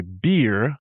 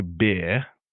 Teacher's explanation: So, whereas an American would say beer, we say bear. So, we don't pronounce the R at the end, and we also don't pronounce the double E as that E sound